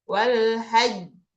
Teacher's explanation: Ditahan baru lepas, mantul. Itu bedanya yang bertasydid sama enggak. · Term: qalqalah